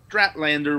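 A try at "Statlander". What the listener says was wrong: There's only one R in her name.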